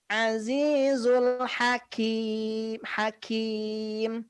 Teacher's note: kalau huruf Kaf dia ada sedikit nafas yang mengalir